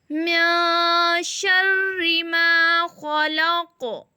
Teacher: قاف تو ہم پر پڑھیں گے یعنی موٹا، لیکن اس کو ہلایا کیوں؟ کیونکہ اس کی زبر جو ہے وہ بلو کلر کی ہے، اس لیے یہاں پہ ہم قلقلہ کریں گے